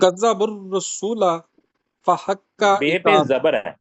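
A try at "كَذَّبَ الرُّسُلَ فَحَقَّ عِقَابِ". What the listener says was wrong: بے پہ زبر ہے، زبر پڑھے، بے پہ زبر ہے. نہیں پھر آپ پیش کیا دیتے ہیں کذب الرسل.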